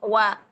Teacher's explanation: اولا تو آپ کا وی کے ساؤنڈ نہیں آنے چاہیے، دانتوں کے قریب نہیں ہونے چاہیے ہونٹ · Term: واو کا مخرج